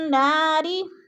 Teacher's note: نون پہ غنہ ہے، سختی سے پڑھیں گے، نون مشدد ہے، جما کر پڑھیں گے، نا کے اوپر الف مدہ ہے، الف مدہ کو بھی ہم نے کھینچ کر پڑھنا ہے۔